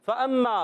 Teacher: فا کا مخرج ہے اوپر والے دانتوں کے کنارے نیچے والے ہونٹ کا تر حصہ